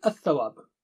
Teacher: To make it easy, we sacrifice lam and shadda is placed on tha. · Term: Shamsi letters